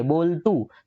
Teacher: આપણે જ્યારે બોલીએ બોલતું, તો તું શબ્દ ઉપર વજન આવતો નથી. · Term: મંદ ઉચ્ચાર